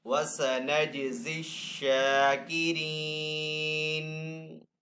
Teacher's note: جیم حروف کلکلہ میں سے تو جیم کے اوپر یہاں پہ کلکلہ کریں گے. شین کے اوپر یہاں پہ کھڑا زبر ہے تو شین کو ایک الف دو حرکات کے برابر کھینچ کر ادا کریں گے.